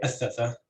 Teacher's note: with stress on the first syllable, and you could say athatha with stress on the first syllable as well.